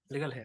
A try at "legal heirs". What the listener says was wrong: Legal, not hair.